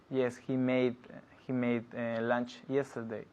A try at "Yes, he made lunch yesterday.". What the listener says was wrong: Yeah, but es que no escucho la D. Yes, he made. Made. Not made. Made lunch. Yes, he made lunch yesterday. He made. Hay que escuchar eso. He made lunch yesterday.